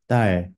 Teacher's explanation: It sounds more like a T rather than a D in many words when it's an initial consonant.